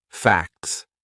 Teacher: so that would be a silent T. It's in between a C and an S, two consonant sounds. Facts. And it sounds exactly the same as F-A-X, F-A-X.